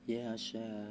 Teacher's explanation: Sebab mad thobi'i bertemu Hamzah dalam satu kata panjangnya lima harakat. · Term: mad wajib muttasil